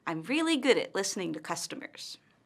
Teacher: Notice how her intonation falls at the end of the statement.